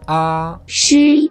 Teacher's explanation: El primer tono es cantadito, como si mantuvieras una nota musical.